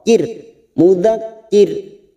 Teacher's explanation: tipis dengan ciri-ciri bibir tersenyum